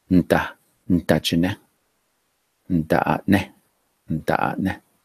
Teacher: notice the N and the D together. There's no vowel. If you said it slow, it would be ne da.